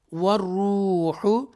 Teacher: را مشدہ کے ساتھ واو مدہ بھی ہے، تو اس کو تھوڑا سا کھینچ کر ہم ادا کریں گے